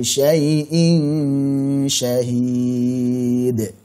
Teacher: Ikhfa hakiki. Karena shin itu tipis maka gunnahnya tipis